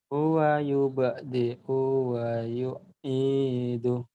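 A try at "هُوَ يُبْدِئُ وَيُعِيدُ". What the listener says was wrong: O-nya pendek mas. Huwa. Huwa pendek. Huwa Huwa yubdi'u pendek mas.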